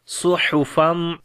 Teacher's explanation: صاد کو موٹا پڑھیں گے حروف استعلا کی وجہ سے اور ہا کو گلے کے درمیان والے حصے سے پڑھیں گے۔